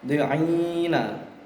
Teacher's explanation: ya mati jatuh setelah fathah kasroh, maka dinamakan mat arid li sukun karena dia kedudukannya di akhir ayat